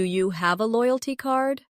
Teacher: In casual speech, do you becomes dia.